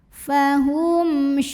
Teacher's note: yang menghadapi huruf selain mim dan ba yaitu huruf syin maka mim sukunnya dibaca idzhar atau jelas bunyi m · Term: izhar syafawi